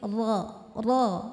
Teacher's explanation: Huruf ro ujung tepi lidah menyentuh gusi gigi seri atas, dan ro karena harokatnya fathah, maka kita naikkan pangkal lidah kita tebalkan. Kuf ro, bukan ro tapi ro.